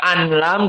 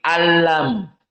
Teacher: Hanya idgham, nun masuk kepada lam. Tidak an lam tetapi alam.